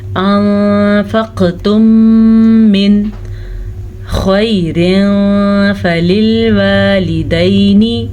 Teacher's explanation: अब यहाँ पे नून साकिन के बाद हरूफ़ हल्की में से ख़ौ है, तो नून साकिन को हम ज़ाहिर करके पढ़ेंगे, बग़ैर गुन्ने के पढ़ेंगे, इसे इज़हार कहते हैं।